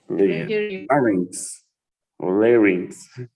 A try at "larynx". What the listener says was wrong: No, larynx with an A, larynx. Only larynx.